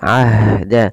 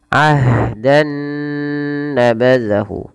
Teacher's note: ha punya sifat namanya sifat hamas, jaroyan nafas ya, hamas. Nah, ini hamasnya juga lembut ya, harus kalau bisa ahda, dan dia punya sifat namanya rokhawah, mengalir suaranya.